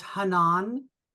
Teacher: with the accent on the second syllable